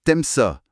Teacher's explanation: Le u de tu disparaît souvent avant une voyelle.